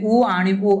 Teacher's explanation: जन्माला येतो वृत्ताकार स्वर दोन आहेत कोणते कोणते उ आणि उ आपल तोंड गोल होत बघा म्हणता वृत्ताकार वृत्त म्हणजे गोल उ गोल होत तोंड आपलं आतून